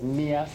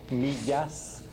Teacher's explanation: There are a few features that those of y'all who are in Spanish might have noticed that she says millas instead of millas. The loss of that intervocalic Y sound is very typical of Mexican American all over the U.S.